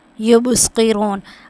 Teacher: اب با پہ جو ہے نا وہ ہم کلکلا کریں گے کیونکہ یہ حروف کلکلا میں سے، اور صاد کو ہم موٹا کر کے پڑھیں گے کیونکہ حروف مستعلیہ میں سے ہے.